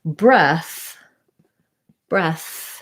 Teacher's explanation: breath has the th sound like mouth or think which is a voiceless th